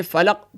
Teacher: اوپر کے دانتوں کے کنارے اور نیچے کے ہونٹوں کے تر حصے سے ادا ہوتا ہے، یعنی اوپر کے دانت اور نیچے کے ہونٹ کا تر حصہ گیلے حصے سے جب یہاں لگائیں گے تو فا ادا ہوگا۔